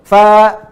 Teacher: Kalau satu huruf, fa misalnya, ditambahkan alif seperti ini, maka huruf fa ini dibaca menjadi panjang. Panjangnya berapa? Dua harokat. Dua harokat itu sama persis menambahkan satu harokat, fa, tambah lagi a, tuh. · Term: mad tabi'i